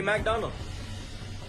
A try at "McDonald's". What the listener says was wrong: It's McDonald's, bro, not McDonald.